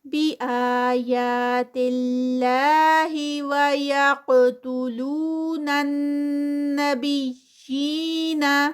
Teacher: قاف کا قلقلہ اور قاف جو ہے وہ ہیوی بھی ہے